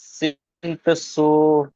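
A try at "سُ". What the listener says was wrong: তিন পেশ সু, সময় টান দিয়ে ফেলেছেন। সিন পেশ সু।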